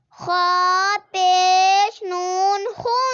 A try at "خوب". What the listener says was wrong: یہ نون نہیں ہے با ہے.